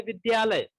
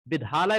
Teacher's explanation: द के जगह हम ध पढ़ रहे हैं, तो वहां पर उसका ध्वनि विकृत हो गई, ध्वनि जो थी उसको हम बिगाड़ दिए।